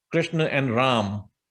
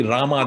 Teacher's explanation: If you are in northern state like UP and Vrindavan, in that areas where the language is not as influenced by, say, in Bengali, people will just say Krishna without an A at the end